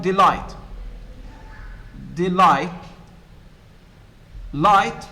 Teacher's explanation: in masculine rhyme the last syllable is stressed